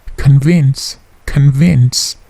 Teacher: Bunyi plosif di k-nya atau si-nya itu hanya sedikit.